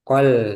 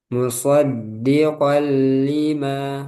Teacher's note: Setelah dimasukkan, itu tidak perlu ditambah guna. Langsung seperti lam bertasdid. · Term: idgham bila gunnah